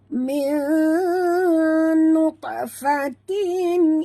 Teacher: Nun mati bertemu nun, idgham ma'al gunah. Kita kena dengung sepenuhnya, 100% dengung 2 harakat ya.